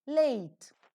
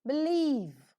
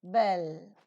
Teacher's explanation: the vocal cords vibrate and hence the sound is voiced so the three term label to describe L as in leave